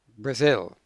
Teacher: the first syllable is bra the second syllable is zil now the stress is on the second syllable